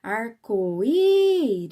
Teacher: Repara que o i, ele saiu por mais tempo da minha boca · A sílaba I de arco-íris é a mais forte. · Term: sílaba mais forte